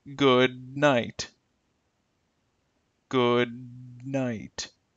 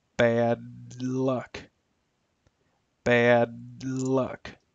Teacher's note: the d and n sound and the l and n sounds all take place in the same positions in the mouth. All require taking your tongue and placing them directly behind the upper teeth on what is called the alveolar ridge.